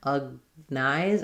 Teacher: Then letter O, even though we have words like cognizant, where that's going to be a clear vowel, and recognize, it's an unstressed sound, and then this G in recognize is not going to be let out, so it's not recognize, no strong G there.